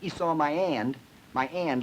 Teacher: with no h on it you'd say it sounds Cockney